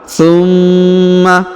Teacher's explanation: huruf ma ditahan dan ditekan karena terdapat tanda tasdid ya pada huruf ma-nya, maka kita tahan dan kita tekan 2 harokat.